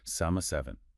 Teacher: >> The seven represents the Arabic letter ha. It's a very sharp breathy h sound from the back of the throat. Imagine you are trying to fog up a mirror or a pair of glasses with your breath.